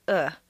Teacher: the uh is one of the four reduced vowel sounds that are made in the throat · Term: soft vowel